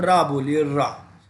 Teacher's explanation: रा को लुंठित वर्ण भी कहते हैं। लुंठित, अब रा बोलिए रा, तो आप देखेंगे ये ऐसे लगे जैसे आप लुढ़का के कोई चीज़ बोल रहे हो